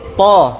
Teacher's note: Kalau huruf yang isti'la, pangkal lidah kita terangkat, itu menyebabkan dia tebal, sehingga bunyinya O.